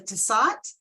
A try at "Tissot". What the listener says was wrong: It's Tissot. The T on the end is silent.